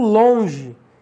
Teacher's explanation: longe é o o nasalizado